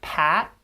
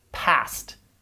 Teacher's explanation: compare pat with an unreleased t versus past with a released t